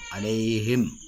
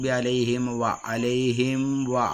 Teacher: ഈ മീം ചുണ്ട് കൂടി വരണം ചുണ്ട് നന്നായിട്ട് കൂടി